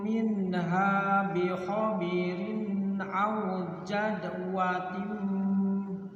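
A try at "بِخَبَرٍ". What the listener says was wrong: bi khabarin bukan bi khabirin, minha bi khabarin aw jazwatin,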